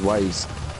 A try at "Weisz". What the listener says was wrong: It's a German name, so W is pronounced as a V.